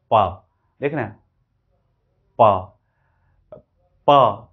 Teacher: तो ये बाइलेबियल है, क्योंकि हम दोनों लिप से इसको रोके थे